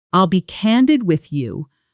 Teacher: Notice how the D almost disappears into the next word when spoken quickly.